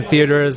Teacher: unstressed T sounds as in community and theater sound like a soft D just like in standard American accent in linguistics this is known as the tapping of the tea